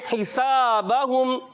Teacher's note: ہا حلق کے درمیان والے حصے سے, سین سیٹی والا حرف ہے, اس کو سیٹی سے ادا کریں گے